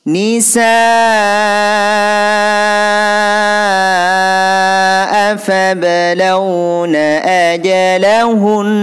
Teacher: Di sini ini hukum bacaan mad wajib muttasil karena ada alif. Alif ini huruf mad bertemu hamzah dalam satu kalimat, panjangnya 5 harokat.